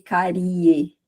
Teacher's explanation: o i ele é menos intenso do que o e que vem em seguida. Então, o e é uma vogal e o i é uma semivogal.